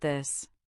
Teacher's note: The first th is voiced meaning your vocal cords vibrate